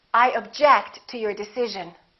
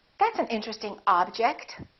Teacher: if it's a verb we get the second syllable if it's a noun we get the first syllable